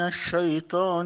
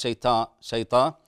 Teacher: الطاء لا ترقق الطاء حتى لا تنقلب الى تاء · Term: تفخيم واطباق